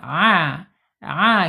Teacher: mengucapkan huruf ain hati-hati jangan a harus di tengah-tengah tenggorokan